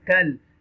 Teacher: You will stretch a little bit. And this kaf will connect with the lam sakina